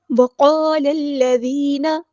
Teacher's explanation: لام کو ہم نے لام کے ساتھ ملا دینا ہے. حمزۃ الوصل ہمارا ڈراپ ہو جائے گا. ذال باریک نرمی سے ادا کرنا ہے.